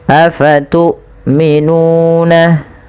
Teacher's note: ketika kita melafalkan tu'minuna, hamzahnya harus ditahan suaranya dan ditahan nafasnya. Afatu'minuna, panjangkan nun sepanjang 2 harakat karena ia mad tabi'i.